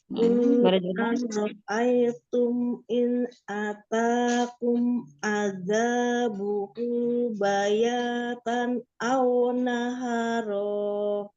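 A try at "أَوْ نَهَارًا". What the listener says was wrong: Hanya satu harakat lagi. Aw naharo.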